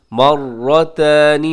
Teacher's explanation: मर्रतानि में रॉ मोटा पढ़ा जाएगा, रॉ के ऊपर हरकत है